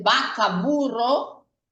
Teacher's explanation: no se hace mucho esa distinción entre el sonido de la B de burro y el sonido de la V de la palabra vaca